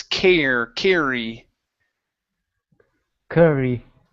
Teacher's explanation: the two RS together is not a rolled R